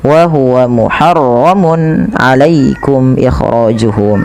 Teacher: pada lafal mun ketemu ain ini harus dijelaskan suara tanwinnya karena adanya tanwin bertemu dengan huruf ain yang dimana ia termasuk daripada bacaan izhar halqi, maka harus dibaca dengan jelas.